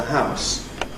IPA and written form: haʊs (house)